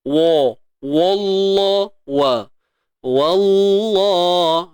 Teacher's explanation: Dan tebal pada kalimah Allah sahaja. Jangan tebal pada wa. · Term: lafzul jalalah